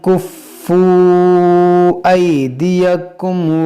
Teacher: یہ مد منفصل ہے کیونکہ یہاں واو مدہ کے بعد حمزہ دوسرے کلمے میں ہے